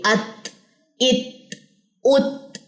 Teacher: ہاں تا کے اندر ہمز کی صفت تو ضرور ہے، لیکن جب تا کے اوپر جزم آتی ہے تو ہمز کی صفت زیادہ پرومیننٹ ہوتی